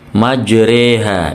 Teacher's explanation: tulisannya majroha, tapi dibaca re, imalah ya, memiringkan fathah kepada kasroh.